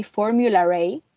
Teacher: you would find an intrusive R in between Formula and A